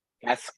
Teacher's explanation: La muerdo un poco a los lados y pego la punta a los dientes de arriba.